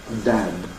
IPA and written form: dæd (Dad)